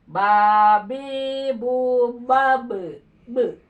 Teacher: ini ba ini memiliki sifat qalqalah, ada pentalan. Harus mental ya.